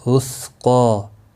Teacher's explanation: قاف کے اوپر کھڑی زبر ہے، 1 الف کے برابر کھینچ کر پڑھیں گے، وقف کی صورت میں بھی اور ملانے کی صورت میں بھی۔